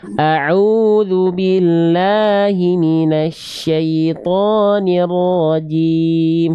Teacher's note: Ainnya kurang kuat. A'udzu billah dari tengah tenggorokan ain.